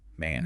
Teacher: Man has an open a sound like cat or apple.